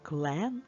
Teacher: в слові клен е під наголосом і чітко вимовляється і чується